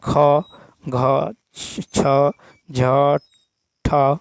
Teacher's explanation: के उच्चारण में अधिक वायु लगती है उन्हें महाप्राण कहते हैं प्रत्येक व्यंजन वर्ग के द्वितीय और चतुर्थ व्यंजन महाप्राण होते हैं